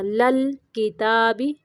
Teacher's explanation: لام کو بھی کلکلا نہیں کرنا، ساکن کرتے ہوئے